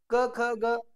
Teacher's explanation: आहे ओठ आहे यांना स्पर्श करते त्यांना स्पर्श व्यंजने म्हणतात मग या वर्णाचा उच्चार करताना हवेचा मार्ग अडवलेला असतो